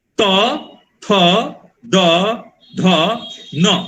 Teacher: त थ द ध बोलते समय में हम दांत को छूते हैं, इसलिए इन सबको बोला जाता है दंत्य। त थ द ध न, ये त थ द में तो दिक्कत नहीं है, न बोलते समय में हमारा दांत का, जीभ किसको छूना है, दांत को।